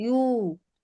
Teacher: दोनों होठों के अधूरे मिलने से वाव होता है